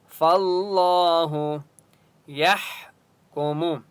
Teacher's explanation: فاللہ لام کے اوپر تشدید ہے اس لیے فا کو لام کے ساتھ ملائیں گے اور اللہ کا نام موٹا ہوگا کیونکہ اس سے پہلے فا کے اوپر زبر ہے. فاللہ یحکم ہا کی آواز حلق سے نکالیں گے اور ہا کے اوپر سکون ہے، یا کو ہا کے ساتھ ملائیں گے.